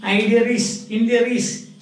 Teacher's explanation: where there is no R, they bring in an R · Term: Inclusive R